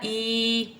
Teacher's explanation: یا ساکنہ سے پہلے زیر آ گیا یا مدہ بن گیا تو تھوڑا اس لیے 2 حرکات کے برابر کھینچ دیا